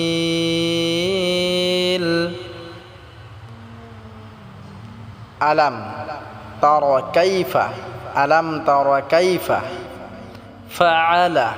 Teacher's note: এখানে আইন টাকে আমরা গলায় চাপ দিয়ে উচ্চারণ করব